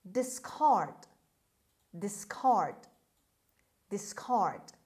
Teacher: the stress is on the second syllable on c or k sound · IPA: /dɪsˈkɑːrd/